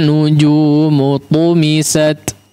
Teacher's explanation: tu bukan pakai ta ya, tu ditebalkan